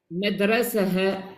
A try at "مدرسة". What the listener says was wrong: Pas ha, c'est ha avec soukoun.